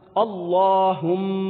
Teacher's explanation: لفظ اللہ کے لام کو پر پڑھنا ہے